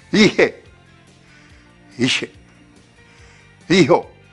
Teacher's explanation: il y a une tendance toute naturelle à chuinter légèrement le H tahitien quand le H est précédé de la voyelle mouillée I, suivi des quatre autres, A, E, O, U. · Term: le chuintement du H expiré